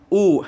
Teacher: जब ऊ करते हो तो आपके ओंठ देखो गोलाकार हो जाते हैं। जब आप ऊ बोलोगे, ऊ, है ना, ऊ बोलोगे तो आपके ओंठ जो है गोलाकार हो जाते हैं, तो देखिए ओष्ठ हो जाएगा।